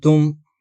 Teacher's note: میرا منہ تا کی شکل میں ہے لیکن میں آواز ناک سے گزار رہا ہوں تاکہ اخفاء کی کیفیت حاصل ہو سکے